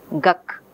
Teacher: So, ka is velar, ga is velar. So, duck is becoming guk, because both ga and ka are of the same place. So, it is much simpler to stay at the same place than move the tongue quickly. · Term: assimilation